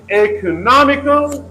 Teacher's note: For example, in economical, the first syllable has a secondary stress and the third syllable has the primary